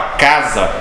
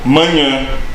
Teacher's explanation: Casa é oral, totalmente oral. E manhã é um som que sai através das narinas, do nariz